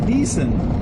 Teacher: Now this Rippermobile uses diesel, but when you say diesel, any word that has an L on the end, once it's written out in Thai, that last consonant that's an L becomes the sound N. So instead of saying diesel, you'll hear me say decent.